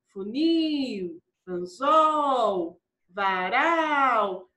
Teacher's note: Então a minha última sílaba é a mais forte e ela não é acentuada. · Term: oxítona não acentuada